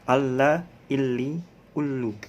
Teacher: Tidak ditekan, tidak didengungkan huruf lam.